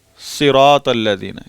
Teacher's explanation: साद के नीचे अगर ज़ेर आ जाए तो इतना मोटा करना है, इतना तकल्लुफ़ नहीं करना कि साद ज़बर अलिफ सा वाली मोटाई आ जाए। आखिरी दर्जे की मोटाई यहाँ है।